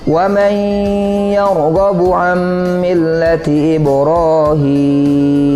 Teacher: kita masukkan huruf yang pertama kepada huruf yang kedua, berarti huruf nun kepada huruf iya, dan setelah itu kita dengungkan, kita gunakan, kita tahan bacanya dua ketukan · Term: idgham bi gunnah